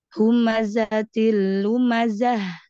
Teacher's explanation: Ta tanwin bil kasri mudogham fil lamil madmumah bi ghairi gunnah, itu jangan ditekan.